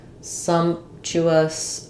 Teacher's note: um first syllable stress we have the shav there Sumptuous um the p is somewhat inaudible um again three consonants in a row sometimes the middle one · First syllable stress, we have the schwa vowel there